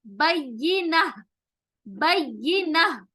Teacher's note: آیت روکنے کی وجہ سے یہ تائے مربوطہ ہاں میں تبدیل ہو جائے گا.